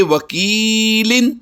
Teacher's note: وکیل کی یا ساکن سے پہلے حرف کے نیچے زیر ہے تو اب اسے لمبا کریں گے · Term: یا مدہ